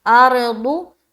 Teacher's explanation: रा को पुर रखेंगे क्योंकि राय साकिना से पहले क्या है, जबर है